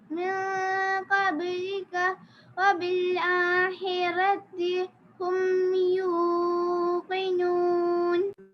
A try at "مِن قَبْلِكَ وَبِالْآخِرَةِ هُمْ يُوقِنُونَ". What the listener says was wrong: So one makhraj was not perfect. It was good, but not perfect. Kha, the kha was not perfect. So your kha is not perfect. So it should come from the throat. You are doing from the throat, but it should be little louder, and it should come from better from the throat.